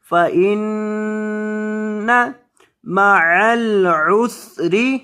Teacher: فإن نون مشدد ہے نون مشدد پر گنہ کریں